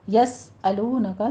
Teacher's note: سین کے اوپر سیٹی کی آواز ادا کریں گے، ہمس ہوگا ساتھ میں